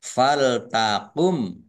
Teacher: mim sukun bertemu dengan huruf tho bacaan izhar syafawi dibaca jelas th fathah Alif Mad thii tetapi karena bertemu dengan huruf hamzah